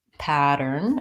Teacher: then we have a flap T pattern it sounds more like a D